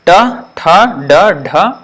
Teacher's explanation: the tip of the tongue touches the top of the hard palate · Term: retroflex